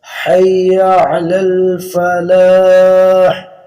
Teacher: علی الفلاح آخر میں فلاح کے ہا نہیں ہے